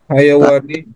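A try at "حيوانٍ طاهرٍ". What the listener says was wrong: Tanwin Pak, karena ini naat bukan idhofah Pak. Karena hewan yang suci, bukan hewan suci. Tapi ya memang agak mirip Pak ya.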